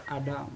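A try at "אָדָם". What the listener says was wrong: Let me hear that M, the final M, Adam. Together all, Adam.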